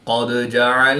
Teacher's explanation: دال ساکن ہے تو اس میں قلقلہ صغریٰ کر کے پڑھیں گے